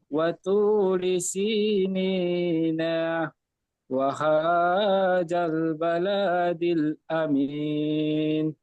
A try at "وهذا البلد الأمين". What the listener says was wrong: ওয়াহাজাল বালা বলে লাম টান দিয়েছেন, লামের উপরে জাবার আছে, হারাকাত টান হয় না। ওয়াহাজাল বালাদিল আমিন। তো ওয়াহাজাল বলেছেন, এখানে যা পড়েছেন, যা হবে না, জাল হালকা হবে। ওয়াহাজাল।